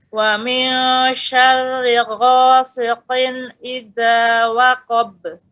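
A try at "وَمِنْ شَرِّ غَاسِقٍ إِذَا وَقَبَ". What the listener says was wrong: Nah, pada ba, bukan be. Karena di bibir. Waqab. Be. Pada bibirnya fokus.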